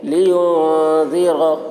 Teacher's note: نون کی آواز کو ناک میں چھپا کر پڑھیں گے، اس کو اخفا کہتے ہیں